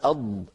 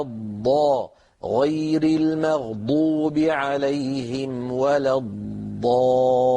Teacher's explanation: الاستطالة جريان اللسان نفسه، اندفاع اللسان إلى مقدم الفم.